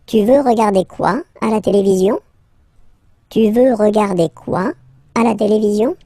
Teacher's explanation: let's raise the voice at the end to make it clear that it's a question